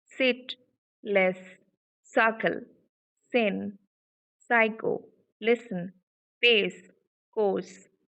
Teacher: there is no vibration you can feel, and that's why it is voiceless